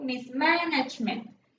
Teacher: For example, mismanagement. The stress relies on man because it's the root of management.